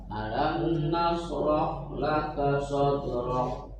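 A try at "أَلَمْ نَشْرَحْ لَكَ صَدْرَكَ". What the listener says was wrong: Syanya kurang hames ya, kurang melebar. Nash.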